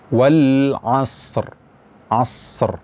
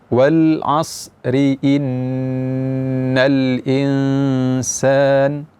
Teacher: Wal asri innal insan, itu ri-nya dibaca tipis. Tapi kalau kita wakaf pada akhir ayat ini, maka ra-nya dibaca tebal.